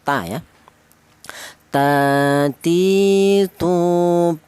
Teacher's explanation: ujung lidah menyentuh pangkal gigi seri atas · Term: huruf ta